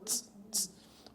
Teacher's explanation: a sequência de segmento T e S devem ser interpretada como uma unidade que será transcrita fonemicamente como um segmento africado alveolar, tss, tss, o qual conta como uma unidade consonantal.